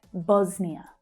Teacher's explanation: Bos is the strong syllable there.